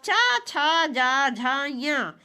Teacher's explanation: तो च वर्ग की ध्वनियां तालव्य वर्ण में आती हैं, अर्थात इनका उच्चारण तालु से होता है।